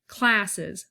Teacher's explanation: With classes, the cla, that is the stressed, okay, and then the sesses or whatever is the unstressed.